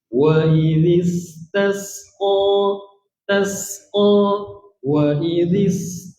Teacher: Bunyi desir tu angin yang keluar tu kita panggil safir.